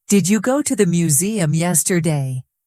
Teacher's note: Notice the rising tone at the end